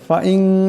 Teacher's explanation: নুন সাকিনের পর তা আছে তা ইকফার হরফ এখানে ইকফার আকারে পরিমাণ গুণ্য হবে